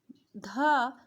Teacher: ध सघोष महाप्राण दंत्य है।